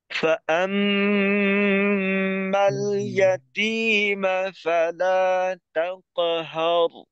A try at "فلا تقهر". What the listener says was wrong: তাকো হয়ে যেন ঠোঁটটা গোল হয়ে না যায়, তাকো না, তাক, ঠোঁটকে টান টান রেখে। فأما اليتيم فلا تقهر